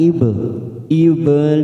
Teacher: karena mati di tengah kalimat jangan lupa dipantulkan